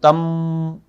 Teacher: تو آپ اس کو پڑھیں گے تمت، جیسے آپ نے منہ کھول دیا پھر سے تمت۔ پہلے میم کے اوپر جب میں سکون پڑھ رہا ہوں تو آپ نوٹ کریں وہاں میرا ہونٹ اور دانت بند ہوئے